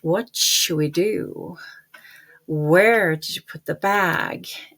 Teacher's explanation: a wh question usually starts kind of high like a ski slope and goes down and comes up a little bit again on the next stress. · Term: wh questions